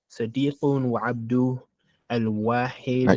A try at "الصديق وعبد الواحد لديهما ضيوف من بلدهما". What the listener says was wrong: You can't stop there. That's one name. Abdul-Wahid.